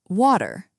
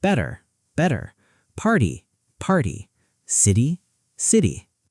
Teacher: In American English, T often turns into a soft D in the middle of words.